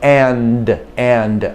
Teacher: you put your tongue behind the teeth and the d comes out it's another plosive you you make a a puff of air so and and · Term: the letter d